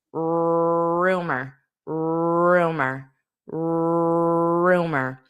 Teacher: Notice how that R position slightly changes at the beginning of the word because it's more of a rounded lips.